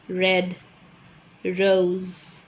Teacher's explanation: it is a voiced post alveolar and as i said it's an approximant and hence what will happen is that there is no audible friction we call it frictionless frictionless and it is continuant let me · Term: r sound